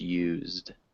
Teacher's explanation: there's no vowel sound in between the Z and the D